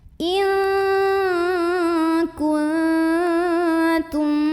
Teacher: Ada ikhfa aqrab karena ada nun sukun ketemu sama huruf ta. Maka nun sukunnya dibaca samar-samar mau bilang tak sambil dengung. Samarnya lebih besar, jadi ini nggak terlalu eng.